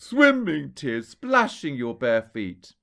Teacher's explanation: the stress hits the beginning of the line there and we call that a troche in the world of iambic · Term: trochee